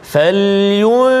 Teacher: Qalqalah dekat situ, falyunfiqa, ada lantunan